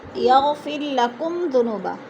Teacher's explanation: میم ساکن کے بعد ذال آ گیا ہے تو ادھر اظہار ہو رہا ہے، غنہ نہیں کریں گے